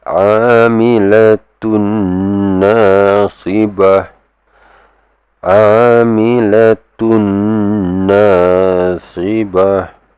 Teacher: Okay, and you need to give it two harakas. When you give it the merging sound, and there's that nasalization sound, you need to give it two harakas, means two counts. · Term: idgham ma'al ghunna